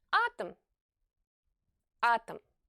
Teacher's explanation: if it's not stressed and follows the stressed syllable it will be pronounced like a very short a